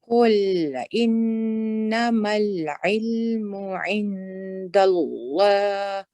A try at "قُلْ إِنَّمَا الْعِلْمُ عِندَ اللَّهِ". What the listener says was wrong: So the lam here, remember, is heavy. So I think the joining lam was heavy, but then when you said the fatha and the mud after it, then it became light.